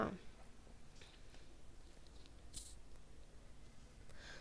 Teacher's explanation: ना दंत व्यंजन है, ये ता वर्ग में आता है। ता वर्ग का उच्चारण स्थान होता है दंत, याद रखेंगे।